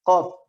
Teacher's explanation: Pangkal lidah menempel pada pertemuan antara langit-langit paling belakang dengan tenggorokan. Ada bagian langit-langit yang lunak. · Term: huruf qaf